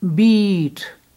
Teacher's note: this double E is Bihari sound, and it's a long sound, double long than the Sihari sound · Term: long sound E